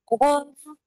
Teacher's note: it's a heavy letter and it's a hard letter and the letter cough comes from the back side of the roof of the mouth